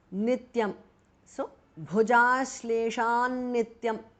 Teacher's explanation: T changes to n because of sandhi. Nityam. So, bhujashleshan nityam because of sandhi.